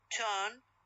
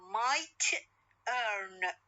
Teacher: hearer turn or might earn might earn them the answer that one case that is fully aspirated initial in turn and in the other case is not being final in mind so what is the difference between or